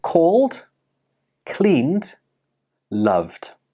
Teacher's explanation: did you hear a soft /d/ sound at the end of these words · Even though these words are spelled with an -ed they do not end with an /Id/ sound. Instead they end with the /d/ sound. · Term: d ending sound